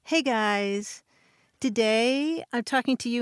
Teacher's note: I'm using rising tones which make it sound like something's always coming next. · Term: lifestyle influencer accent